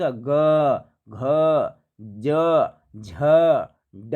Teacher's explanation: उसी तरह से ज, ये सब शब्द बोलते हैं तो हमारा क्या है कि स्वर रज्जु में क्या होता है, वाइब्रेट होता है, कंपन होता है। तो जिसको बोलने में कंपन होता है उसको घोष कहते हैं